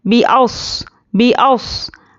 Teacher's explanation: स्वाद पर जज़म है तो जज़म वाले हुर्फ को पीछे वाले हुर्फ से मिलाकर पढ़ेंगे और स्वाद को पुर पढ़ना है